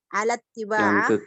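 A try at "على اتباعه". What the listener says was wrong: alat tiba'i bukan tiba'ah.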